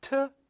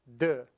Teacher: so it's a alveolar stop voiceless is t and voiced is d